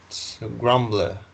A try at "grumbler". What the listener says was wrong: Grumbler, very good.